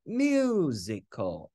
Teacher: Nhấn vào -1 Thầy ghi số 1 tương tự như vậy Musical từ có ba âm tiết Nhấn vào âm số 1